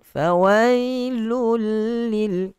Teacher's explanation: Masuk secara kamilan, maksudnya masuk 100% dan tanpa dengung. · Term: idgham